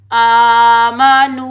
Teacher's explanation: आमा, नून वाव पेश नू वाव मद्दा को हम एक अलिफ की मिकदार में खींच कर अदा करेंगे, ठीक है। वाव साकिन से पहले जब भी पेश आ जाए तो ये होगा वाव मद्दा, इसको हम एक अलिफ की मिकदार में खींच कर अदा करेंगे, ठीक है।